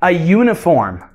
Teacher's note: o som é o som de glide do Y, que é um Y, Y. Isso é um som de consoante.